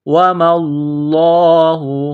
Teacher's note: لفظ اللہ کے نام سے پہلے زبر ہے تو لفظ اللہ کے نام کو موٹا کرنا ہے